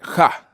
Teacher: the word ha is actually pronounced as an aspirated ha. And Bantu rule shows that the Shivenda H is equivalent to the letters KH, or the sounds, I should say, KH or K.